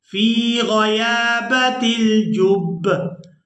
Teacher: बा को सख्ती के साथ अदा करेंगे क्योंकि यहाँ पर शद है। तो जो शद वाला हर्फ होता है उसे हम सख्ती के साथ अदा करते हैं।